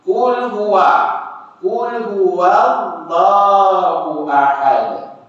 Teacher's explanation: Bukan huwa tu yang tebal. Lafaz Allah tu yang tebal.